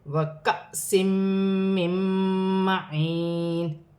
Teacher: نون ساکن کے بعد میم مشدد آ رہی ہے، نون ساکن میں غنہ کیا جائے گا